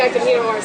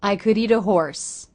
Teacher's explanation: Notice the T at the end of the word eat links to the next word, the schwa sound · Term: flap T